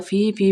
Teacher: فی میں جو مدہ تین الف کے برابر لمبی پڑی جائے گی